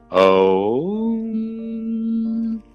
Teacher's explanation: उसको फिर आपने क्या करना है, उस ओम को बोलते वक्त आपने स्लाइड करना है, सांस अंदर भरना है और ओम, अ से शुरू किया, ऊ को टच करते हुए मां पे छोड़ दिया